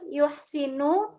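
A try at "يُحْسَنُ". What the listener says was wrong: Yusanu. Yusanu bukan Yusinu.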